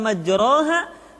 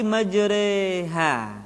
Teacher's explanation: huruf ro yang berharakat fathah dibaca miring ke kasrah sehingga bunyinya bukan majroha tetapi majreha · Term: imalah